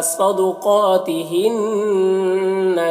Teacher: نون مشدد ہے تو اسے غنہ کے ساتھ پڑھیں گے،